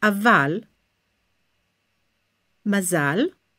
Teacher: It's almost like it's a little closer to a. I wouldn't pronounce it as a, like English a, but it's a little more forward in the closed syllable